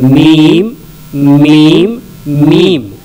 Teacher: दोनों होंठ का जो तर हिस्सा है ऊपर की तरफ से, उसको जब हम टच करेंगे तो मीम निकलेगा